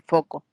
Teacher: la f de foco no hay movimiento no hay vibración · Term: consonantes sordas